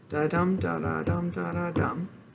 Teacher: The rhythm is anapestic, which means there are 2 unstressed syllables followed by a stressed syllable.